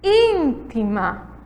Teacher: palavra proparoxítona aí que a palavra íntima que é a antepenúltima a antepenúltima sílaba é a mais forte é a sílaba tônica